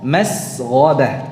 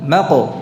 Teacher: Yang rakhawah ada durasinya, masghabah. Yang satu syiddah, pendek ya, ada qalqalahnya